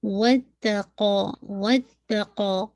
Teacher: قاف کو اگین آپ نے ہیوی پڑھنا ہے